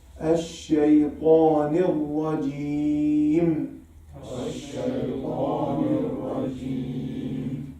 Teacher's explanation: Ta, the whole of the tongue will be elevated because it's إطباق, adhesion, and elevating.